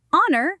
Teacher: Because the H in honor and our is silent, the word starts with a vowel sound.